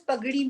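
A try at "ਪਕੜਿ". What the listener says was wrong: Pagri nahi hai, Pakri. It's Pakri. It's not Gaga. It's Kaka. Is it Gaga with you?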